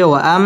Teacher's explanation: ওয়াও ঠোঁট গোল করে উচ্চারণ করতে হবে